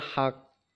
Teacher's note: Ini adalah qalqalah kubro karena waqaf di akhir kalimat minal haqq.